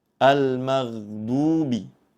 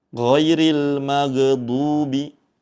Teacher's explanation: Huruf ghain sukun membacanya dengan dialirkan. Jangan sampai dibaca memantul.